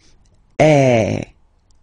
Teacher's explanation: the sound is really open and normally your mouth should be opened a little bit more than with the accent as well okay so it go goes